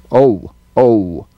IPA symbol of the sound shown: əʊ